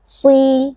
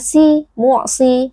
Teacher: Shad, huruf tebal, meskipun berharokat kasrah